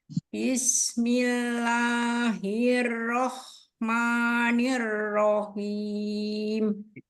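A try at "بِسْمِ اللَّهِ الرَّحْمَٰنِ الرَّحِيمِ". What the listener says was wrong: Ro-nya masih suka mulutnya bulat itu. Hiro. Harusnya hirrahman. Ro itu tebelnya di dalam bukan karena di o-in bibirnya.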